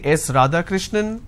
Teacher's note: the answer is yes radhakrishnan some people say yes radha krishnan now it goes on a rising tone now it doesn't come as an answer it comes as a guess or it comes as a question